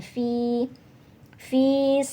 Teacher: karena ada harakat kasrah Fi diikuti Ya Sukun jadi bacanya panjang dua ketukan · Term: Mad Thobi'i